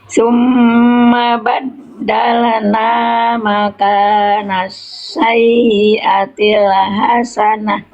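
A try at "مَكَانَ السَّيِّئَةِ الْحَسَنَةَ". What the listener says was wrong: Ini huruf H kecil jangan dibaca H besar ya.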